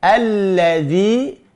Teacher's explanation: Alladzi, lamnya la, zi, zal, ujung lidah mengenai ujung gigi siri atas. Alladzi, yu-nya dimonyongkan.